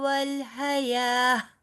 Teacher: یہ تا گول تا جو ہے وہ گول ہا میں بدل جاتی ہے جب آپ رکتے ہیں